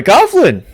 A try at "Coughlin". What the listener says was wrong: it's not Coughlin. It's Coughlin. It's not like you're actually coughing.